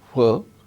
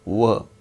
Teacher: voiceless f, voiced v